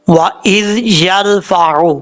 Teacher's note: حمزہ کے بعد جو زال ہے، یہ زال نارمل طریقے سے پڑھا جاتا ہے، اس کو سیٹی کے ساتھ نہیں پڑھنا۔ بعض اوقات لوگ پڑھتے ہیں وا از، ایسا نہیں پڑھنا۔